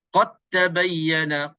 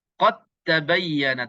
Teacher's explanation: terus kita masuk ke dalam ta tanpa kita sebutkan sedikit pun dal. Walaupun dal ini huruf qalqalah, kita tak sebut. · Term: idgham mutajanisain